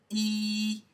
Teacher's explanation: It's not only long, it's also high and front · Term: long vowel